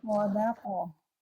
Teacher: Qafnya dipantulkan, dia punya sifat kolkolah. Tapi harus diperhatikan pantulannya seperti apa. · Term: qaf sukun